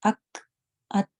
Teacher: کیونکہ کاف اور تا جو ہے وہ شدہ والے لیٹر بھی ہیں، یہ سڈنلی بند ہو جاتے ہیں۔